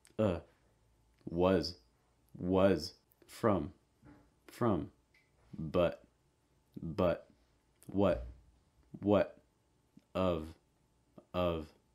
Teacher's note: schwa sound mouth mostly closed and relaxed front of tongue raised